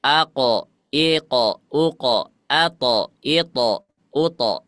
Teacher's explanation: Tapi kalau ada huruf qof maka vokalnya apa O ya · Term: tebal